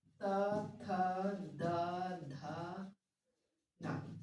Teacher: त वर्ग के है वो दंत से बोले जाएंगे